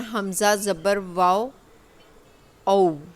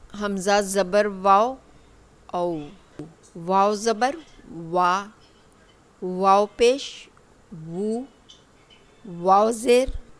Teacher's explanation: गैर मद्दा वाव का मखरिज हमारे लिप्स हैं। ये देखिए ये शेप में होंगे।